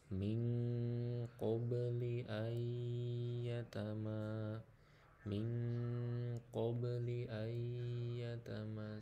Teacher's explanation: nun mati menghadapi ya, ditasdidkan kemudian ditahan 2 ketukan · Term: idgham bigunnah